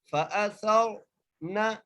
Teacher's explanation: لیے ہم اس را کو موٹا کر کے پڑھیں گے، فَأَثَرْنَ، نون کو بغیر کھینچے پڑھنا ہے، بغیر جھٹکا دیے پڑھنا ہے